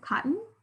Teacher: that second syllable very clearly is a schwa